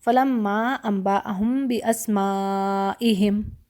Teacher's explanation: واجب متصل، جو جڑی ہوئی ہے، اور اس کو مجھے 4 یا 5 حرکت پر لینا ہے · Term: مد الواجب متصل